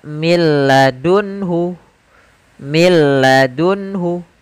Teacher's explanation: Tidak dibaca min ladunhu, tapi langsung ke huruf lam. Karena nunnya dianggap tidak ada dan diidghamkan ke huruf lam. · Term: idgham bila gunnah